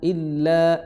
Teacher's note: hamzah i di tenggorokan paling dalam, ya, di kedua pita suara